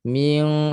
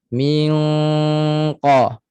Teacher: Pangkal lidah pada langit tu lembut. Ming sekat suara naik ke hidung. Jangan ada suara di mulut, 100% di hidung. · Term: ikhfa yang tafkhim